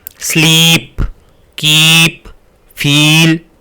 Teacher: हिंदी में अगर कहें तो बड़ी ई की जो मात्रा है उसके लिए आप फिर थोड़ा सा टाइम लेते हैं